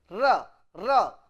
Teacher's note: the tip of the tongue touches the upper cavity and it vibrate so it is Trill